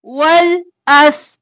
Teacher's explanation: وَال لام ساکن اس سین ساکن وَالْأَس دونوں کو نہیں ہلانا